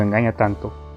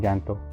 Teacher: en las palabras tanto y llanto, la sílaba tónica es la A